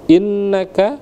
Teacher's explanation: inna gunnah musyaddah, digunnahkan, didengungkan